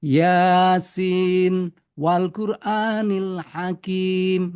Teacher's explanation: ini harus dibaca tetap nunnya dibaca dengan idhar